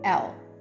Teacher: so the tongue is pretty what would it be l so your tongue goes to the top of your mouth but it doesn't stay there for very long and it doesn't move forward or backward it just goes L